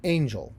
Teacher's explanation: word Angel so when we say it we say it Angel first syllable stressed second syllable unstressed and then unstressed second syllable is just oh it's just it's